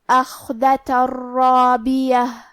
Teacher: کلمت رابیہ، را حروف الادغام بغیر غنہ میں سے ہے اور ادغام کا معنی ہے حرف کو حرف میں داخل کرنا، تو ہم یہ تنوین کو را میں ملا کے بغیر غنہ سے لیکن تشدید کے ساتھ یہ حکم کو ادا کریں گے